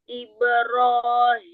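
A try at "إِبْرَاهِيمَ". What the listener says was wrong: Ibrahim Jangan hi, ada tamtid pada hi-nya tadi. Ibrahima, Ibrahima. Iya, jangan ambil ancang-ancang pada hak besarnya.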